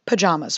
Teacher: the south has adopted this broader a sound from words like darling and pajamas